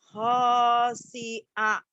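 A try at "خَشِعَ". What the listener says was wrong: Salah, nggak ada yang panjang. Khosyi'a, nggak ada yang panjang ya.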